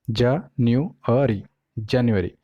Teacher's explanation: तो ये जो है ये syllable है, तो इसमें 4 syllable है, January, जनवरी। तो जो स्ट्रेस है वो रहेगा सेकंड syllable पे, न्यू पे